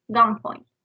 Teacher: In the word gunpoint, the N is changed to M sound. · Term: regressive assimilation